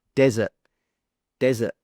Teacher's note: So you can see that the pronunciation is exactly the same, the sounds are the same, but the only difference is the stress. In the first one, the stress is on the first syllable or the first sound